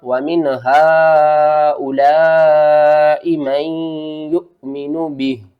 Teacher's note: یہاں پر مد متصل ہے، 5 الف کے برابر کھینچ کر پڑھیں گے۔